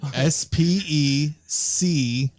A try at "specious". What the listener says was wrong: Is that how you actually say it? Specious? I think it's SH sound. Not you're saying it like it was species.